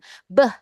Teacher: Diganggunya di dua bibir. Dua bibir beh. Karena ada gangguan berbunyilah dia beh.